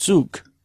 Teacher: You don't have a voiced velar stop at the end of that. You have a voiceless velar stop. Zug, not Zug, but Zug, with essentially a K at the end. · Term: word final devoicing